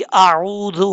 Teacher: आइन के बाद वाव है, वाव मद्दा है, वाव साकिन से पहले पेश हो तो वाव मद्दा होता है, एक अलिफ की मिकदार लंबा किया जाता है